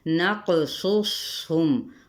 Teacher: قوف پہ قلقلہ، میم پہ اظہار شفوی